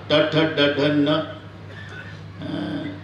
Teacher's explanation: नेहमी जीभ वरच्या टाळूला लागत असते म्हणून तालव्य.